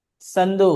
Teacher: هذا يكتب صاد ولكن يقرا مثل السين تماما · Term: بدون التفخيم